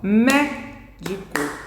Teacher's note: Então, médico, a sílaba tônica é a antepenúltima.